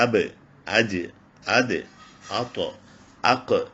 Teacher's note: ഇതില് അഞ്ച് അക്ഷരങ്ങൾക്ക് സുക്കൂന് വരുമ്പോൾ കൽക്കല ചെയ്യണം അല്ലെങ്കിൽ വിറപ്പിച്ച് പറയണം